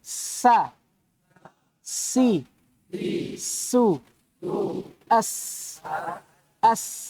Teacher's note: di mana keluar ini antara gigi bawah dengan gigi atas